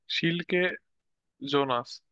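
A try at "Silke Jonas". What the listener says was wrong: সিল্কে ইয়োনাস, ওই যে জের উচ্চারণটা হয় না। জিলকে না, জিলকে ইয়োনাস।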